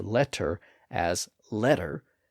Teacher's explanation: when we pronounce the d sound or that similar tap sound it is voiced we narrow the vocal folds a bit so that they vibrate and flutter